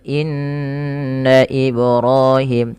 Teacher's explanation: tahan bunyi nun yang bertasydid karena ia ghunah